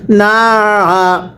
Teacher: আইনটা উচ্চারণের সময় গলার মধ্যে চাপ দিয়ে পড়বেন